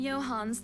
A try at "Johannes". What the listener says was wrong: in Swedish you uh pronounce the e as well Johannes